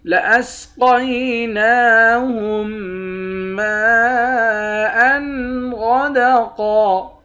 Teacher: لَأَسْقَيْنَاهُم مَّاءً غَدَقًا، میم کے بعد الف ہے، الف پر مد ہے، اس مد کو 5 الف کی مقدار کھینچ کر پڑھیں گے۔